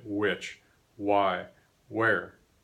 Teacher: the wh that you see spelled in words like which or why or where is routinely regularly replaced by W